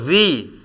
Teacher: स्वर री का उच्चारण मूर्धा से किया जाता है, इसीलिए इसे मूर्धन्य कहते हैं।